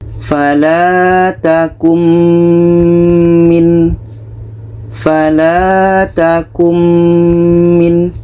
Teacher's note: Ini nun mati bertemu mim, idgham bi gunnah. Maka bunyi nun ini kita masukkan kepada bunyi mim. Kita baca fala takum min.